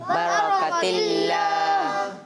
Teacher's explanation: قاف موٹا نہیں کرنا ہے، یہاں کاف باریک ہے، را کو موٹا کرنا ہے